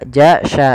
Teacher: makhraj daripada huruf syin makhrajnya adalah tengah lidah kita